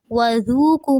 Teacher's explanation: وذوقوا میں ذال کو نرمی سے ادا کرنا ہے اور واو ساکن سے پہلے پیش ہے